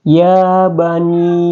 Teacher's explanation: Mad Jaiz munfasil ini dalam hukum tajwik dibaca panjang boleh dua dan hingga lima harakat jadi boleh dua sampai lima harakat panjangnya contoh ya bani ya